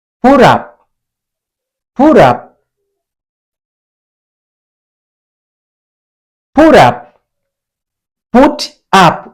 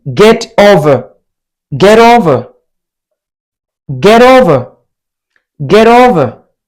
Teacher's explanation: T at the end of the word but between two vowel sounds. Make T flat.